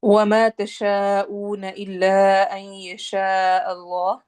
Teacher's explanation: Word ہے۔ وَمَا تَشَاءُونَ إِلَّا أَن يَشَاءَ اللَّهُ، تجوید دیکھیں گے۔ وما واو میں ہونٹ گول کریں گے، ما میں الف مدہ کرنا ہے، الف کو 2 حرکہ لمبا کریں گے ، تشا پہ مد کرنی ہے اور او پہ واو مدہ · این پہ ادغام غنہ کرنا ہے، این یشاء پہ مت ہوگی، اللہ میں اس پہ جلالہ کے لام کو موٹا پڑھنا ہے اور آخر میں ہا کی آواز آئے گی۔